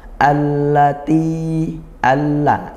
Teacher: Allati, alla, ini al bertemu huruf lam idgham syamsiyah, dibaca masuk gitu ya ke huruf lamnya. Kemudian ti kasrah diikuti ya sukun, dibaca panjang mad tabi'i